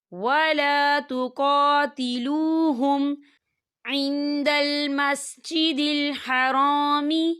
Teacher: یہاں میم ساکن ہے اور میم ساکن کے بعد عین آ رہا ہے، تو یہاں پر اظہار شفوی ہو رہا ہے اور ہم اسے بنا غنّے کے پڑھیں گے